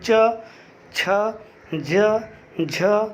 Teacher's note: तो आप जब च से लेकर के इया तक पढ़ते हैं तो आपकी जीभ ऊपर तालु को छूती है। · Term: तालु वर्ण